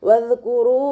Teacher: വാവ് ഉച്ചരിക്കുന്ന സമയത്ത് ചുണ്ടുകളെ വട്ടത്തിൽ പിടിച്ചു കൊടുക്കുക കേട്ടോ. പല്ലിനെ ചുണ്ടിൽ തട്ടിക്കാതെ നോക്കുക.